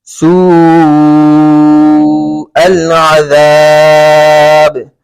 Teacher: واو مدہ ہو رہا ہے، واو مدہ کے بعد حمزہ اسی کلمے میں آ رہا ہے تو مد متصل ہوگا